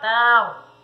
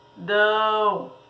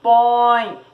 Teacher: Essas palavras nós dizemos que são ditongos nasais, porque eles fazem com que os sons saiam do nariz